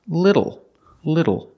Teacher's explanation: Li little the second syllable is not L it's o o it's a short sound plus a dark l · Like when you say table or bottle. It's a short sound, uh, plus a dark L, O-O-O. So the word is little, little.